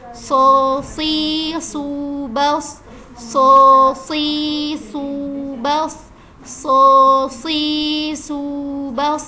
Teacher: karena dia huruf tafkhim jadi kita angkat pangkal lidah kita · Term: huruf tafhim